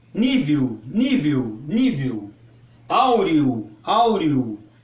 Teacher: esse O no final quase vira um U.